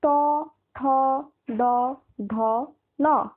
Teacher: জিভটা তোমার মুখের ভেতরের যে তালুটা রয়েছে সেই তালুর একেবারে মাঝখানটা স্পর্শ করছে। একদম মুখের ভেতরের যে ওপরের অংশটা সেই যে মাঝখানটা একদম ফাঁকা উঁচু যে মাঝখানটা ওই জায়গাটা স্পর্শ করছে তোমার জিভ। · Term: মূর্ধন্য বর্ণ